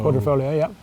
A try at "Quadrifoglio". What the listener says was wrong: You don't pronounce the G.